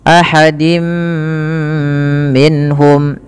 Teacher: tanwinnya dimasukkan ke huruf mim mim dan ditahan. Dan inilah yang kita kenal dengan bacaan idgham bighunah, yaitu idgam memasukkan surat tanwin kepada mim dan ditahan diganti bunyinya menjadi bunyi mim. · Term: idgham bi gunnah